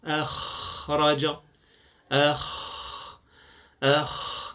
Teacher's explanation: معها الخاء فهو ليس من حروف الاطباق اللسان لا يصعد كله فقط مؤخره اللسان تصعد لتنطق الخاء اما مقدمه اللسان فتبقى في الاسفل تبقى منفتحه بعيده عن الحركه الاعلى فهو من حروف الانفتاح كما